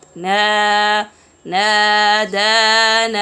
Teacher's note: make sure to remove the nasal sound for the med, because med isn't with nasal sound.